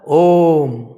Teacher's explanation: हम बोलते हैं ओम बोलते हैं ठीक है तो ओम में ओम बोलने में बड़ा लंबा समय लगा ओम तीन गुना समय लग गया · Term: त्रिगुणा